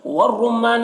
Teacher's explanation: والزیتون، دیکھیے یہاں پر یالین اسے نرم آواز کے ساتھ جلد پڑھیں گے، تو میں واو مدہ ہے 1 الف کے برابر کھینچیں گے۔ والرمان، را کو پر پڑھیں گے اور میم مشدد غنہ کے ساتھ پڑھیں گے، الف مدہ ہے 1 الف کے برابر کھینچیں گے۔